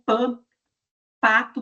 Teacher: obstrução completa da corrente de ar e vai ser seguida por uma liberação mais explosiva do ar para poder formar o som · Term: oclusiva